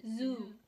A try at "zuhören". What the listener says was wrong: No, and the Z is pronounced set. So like Zoo. It's pronounced zuhören.